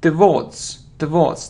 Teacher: It isn't towards, it's towards, towards. The stress is on the second syllable.